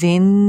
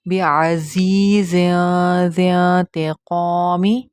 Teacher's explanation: یہاں پہ اخفا ہو رہا ہے، زین نہیں پڑھنا ہے اس کو، بعزیز زین نہیں پڑھنا، تھوڑا سا چھپا کر پڑھیں گے تنوین کی آواز کو.